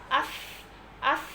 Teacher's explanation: এবং এখানে কিন্তু সাকিন এসেছে। এখানে সা হচ্ছে হামসের হরফ। অর্থাৎ এখানেও কিন্তু হালকা বাতাস জারি রেখে পড়তে হবে।